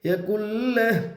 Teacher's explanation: हाँ के ऊपर उल्टा पेश है, उल्टा पेश को हालत वक़्फ़ में जज़्म से बदल कर पढ़ेंगे